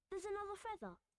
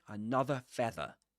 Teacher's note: Without pronouncing the final r.